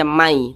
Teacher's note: jadi Nun sukunnya ini dimasukkan ke huruf ya jadi dibaca Mai tidak dibaca Man · Huruf ya termasuk salah satu huruf idgham bi gunnah. Maka cara membacanya itu dengan cara memasukkan kemudian disertai dengan gunnah, disertai dengan dengungan. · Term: idgham bighhunah